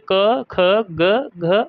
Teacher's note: क वर्ग के क ख ग और ह और विसर्ग इनका उच्चारण स्थान क्या होगा? इनका उच्चारण स्थान कंठ होगा।